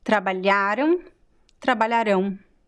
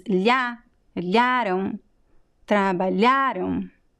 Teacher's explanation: So when you say eles trabalharam, so the stress is in the middle.